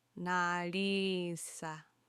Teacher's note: these two I's together form a longer sounding E